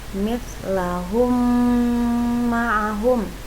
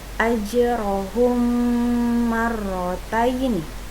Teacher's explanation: Idgham mimi adalah apabila mim sukun bertemu dengan huruf mim. Cara membacanya adalah seperti menyuarakan mim rangkap atau ditasydidkan dan wajib dibaca dengung.